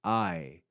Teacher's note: you would hear both of the sounds of those vowels A and E joined together in one syllable